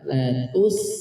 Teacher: Latus disenyumkan supaya sin di sini terbaca tipis, ya. Tidak dibaca latus dalam kondisi masih monyong di sini, maka akan terbaca tebal huruf sinnya.